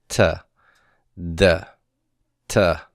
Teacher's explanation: table think about how you pronounce all of these consonants and all of them the tongue comes and makes contact with the back of the teeth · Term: dental consonant